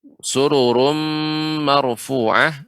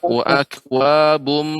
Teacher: maka ini harus ada gunnah yang dipanjangkan, tidak terlalu pendek